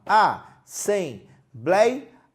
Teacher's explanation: aquele blei é a parte mais forte, é a tônica da palavra. E agora, observe que nós temos o ditongo aberto, ei, que antigamente tinha acento.